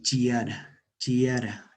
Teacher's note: alargamiento compensatorio por elisión de consonante